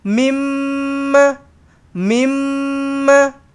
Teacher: mim sabdu dengungkan dua harakat wajibul ghunnah